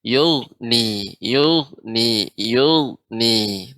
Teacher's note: Namun sedikit tadi koreksiannya, huruf ghain ketika sukun ya, maka dia tidak boleh dipantul ya, tidak boleh yugni.